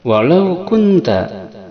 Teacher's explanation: walau ada harap lin, tidak dibaca panjang, namun ketika membunyikan la ditarik ke domah, lau.